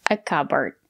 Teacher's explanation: It's a two-syllable word. The stress is on the first syllable.